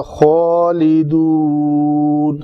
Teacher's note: خا کو موٹا رکھنا ہے، پر پڑھنا ہے